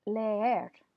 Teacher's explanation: these two E's don't combine in Spanish to form a new sound. They're two separate syllables. And sometimes it may sound like there's a Y in between there, leer, but there's not.